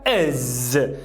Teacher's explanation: Agora, já se a palavra acaba com esses sons aqui, ó, que são as sibilantes e as africadas, a gente vai adicionar um is. Só que não é nem o E do português, nem o I do português. É o I relaxado do inglês.